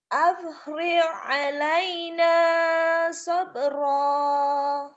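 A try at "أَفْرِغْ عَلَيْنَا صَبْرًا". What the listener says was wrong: G-nya kurang mantep. Afril kayak keselak Afril. G, golf, Afril, gin kan G. Afril G-nya tapi G pecah. Jangan aprik itu orang Sunda ya. Goiril go. Kalau orang Jawa go-nya ke ho. Hoiril.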